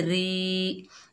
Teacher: ज़ेर की वजह से रा बारीक पड़ी जाएगी। आगे या साकिन है, ये या मद्दा है, 1 अलिफ की मिकदार खींचकर पढ़ेंगे, री।